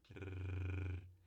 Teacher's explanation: é a ponta da língua vibrando nos alvéolos ou atrás do dente · é uma vibração múltipla da língua nos dentes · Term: vibrante